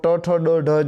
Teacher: તમારી જે જીભ છે એ તાળવાથી થોડા આગળના ભાગે અડે છે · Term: મૂર્ધન્ય